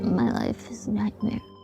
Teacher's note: this is why it's called vocal fry. Because it actually sounds like thick liquid bubbling.